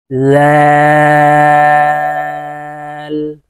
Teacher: জিব্বার আগা সামনের উপরের দুই দাঁতের আগার সঙ্গে লাগিয়ে উচ্চারণ করতে হবে